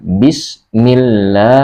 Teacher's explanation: Kalau dia lam tafkhim, maka dia membacanya harus tebal seperti wallah atau Allah, didahului dengan dhammah atau fathah harokatnya, tapi ini harokatnya kasroh, jadi membacanya harus tipis, jadi lam tarqiq